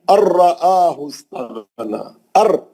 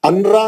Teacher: نون نہیں پڑھیں گے, نون غائب ہو جائیں گا. ادغام بلا غنہ ہے. یہ بلا غنہ کے 2 حرف ہے, را اور لام.